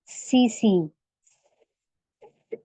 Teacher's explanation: सीटी जैसी आवाज को सफीर कहा जाता है। सीटी की इनमें आवाज निकलती है।